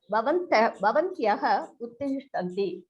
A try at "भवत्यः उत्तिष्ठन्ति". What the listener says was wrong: Bhavatyaha uttishtanti. And you are doing the same mistake, adding nakara. Bhavati, bhavatyau, bhavatyaha.